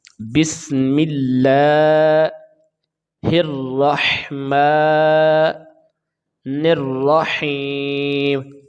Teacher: میم کے نیچے زیر ہے تو جب ہم وقف کریں گے تو میم کے نیچے زیر ہم نہیں پڑھیں گے اور میم کے اوپر جزم آ جائے گی۔ · ہا کو جب ہم یا کے ساتھ ملائیں گے تو اس کی لمبائی میں اضافہ ہوگا، اس کو یا مدہ کہتے ہیں۔ اس کی پہچان یہ ہے کہ یا ساکن سے پہلے زیر آ جائے یا زیر کے بعد یا ساکن آ جائے تو ہم اس کو کھینچ کے پڑھتے ہیں، اس کو یا مدہ کہتے ہیں۔